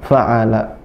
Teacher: Yang benar satu, fa'ala, tipis semua, pendek semua.